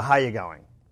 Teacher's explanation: we also go down at the end of sentences we make statements even when we're asking questions so how you going okay so it's it's a downward sound